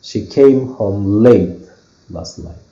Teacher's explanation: so I'm stressing the word late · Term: main stress